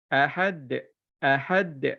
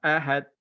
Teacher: Semula lantunkan dal tu dekat hujung. Bila dia hujung dia mati, kena lantunkan. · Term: qalqalah